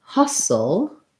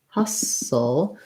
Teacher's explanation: we don't say the t there and it has a schwa sound rather than an ah like in hostile